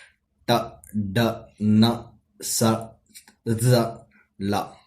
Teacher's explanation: These consonant sounds are produced by the action of the blade of the tongue and against the teeth ridge. Just above the upper part of the upper teeth, we are having teeth ridge with the help of blade part of the tongue and teeth ridge we can produce alveolar sounds.